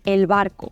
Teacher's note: es aproximante y no oclusiva porque al pronunciarla los labios se juntan se aproximan pero no llegan a tocarse y la pronunciamos en todas las otras ocasiones en las que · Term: bilabial aproximante